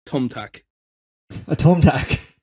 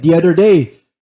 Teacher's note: Irish people don't really pronounce TH sounds